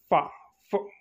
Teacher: ఎగ్జాక్ట్గా సౌండ్ అంటే ఆ వాయిస్ బయటికి రాదు, గాలి వస్తుంది అన్నమాట